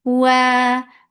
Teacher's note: Makhraj of waw, circling your lips, make it 2 counts long.